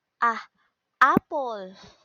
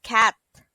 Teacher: The short vowel sounds A is pronounced as ah, apple. To produce it, the tongue must be fairly low and raising slightly. An example of it is the word cat.